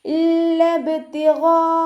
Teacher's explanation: മദ്ദക്ഷരവും ഹംസയും ഒരേ വേർഡിലായിട്ടാണ് വന്നിട്ടുള്ളത്, അപ്പോൾ മദ് വാജിബ് മുത്തസിലാണ്, 4-5 കൗണ്ട് നിർബന്ധമായിട്ട് നീട്ടിക്കൊടുക്കുക കേട്ടോ. വജ്ഹി റബ്ബിഹിൽ അഅ്ലാ. · ഇവിടെ ബാ കൽക്കലയുടെ ലെറ്റർ ആണല്ലോ, അപ്പോൾ ഫുൾ സുക്കൂന് കൊടുത്തിട്ട് ഉച്ചരിക്കുക. ഐനിൻ്റെ കൂടെ അലിഫ് മദ് വന്നു, അലിഫ് മദ്ദിന് ശേഷം ഹംസയും വന്നു.